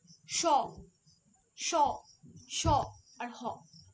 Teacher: যখন আমরা উচ্চারণ করছি তখন আমাদের শ্বাসবায়ু সবথেকে বেশি জোরে নির্গত হচ্ছে। তাই এটাকে আমরা বলছি উষ্ণধনি। · যে ধ্বনি বা যে ধ্বনিগুলো উচ্চারণের সময় উষ্ণ অর্থাৎ শ্বাসবায়ুর উপর বেশি জোর দেওয়া হয় সেই ধ্বনিগুলিকে আমরা উষ্ণ ধ্বনি বলি